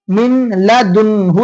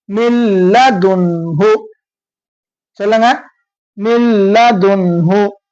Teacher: அதே மாதிரி மீம் நூன் லாம் ஜேர் மின் சொல்லாம மில் சொல்லணும்.